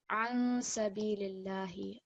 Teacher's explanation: we have the noon sakin, and because it's followed by sin, this is going to be a short nasal sound.